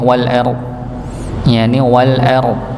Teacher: bertemunya ro yang ditebalkan dengan huruf d yang memang tebal. Karena ra, sekali lagi ro itu kadang dia bisa tebal, bisa tipis.